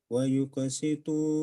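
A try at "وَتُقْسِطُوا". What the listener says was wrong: Watuqo pakai ta, Pak.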